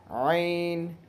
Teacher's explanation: درمیان حلق سے عین ادا ہوتا ہے۔